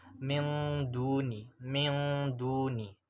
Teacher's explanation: bacaannya juga dibaca dengan samar dan dengunya itu lebih jelas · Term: ikhfa aqrab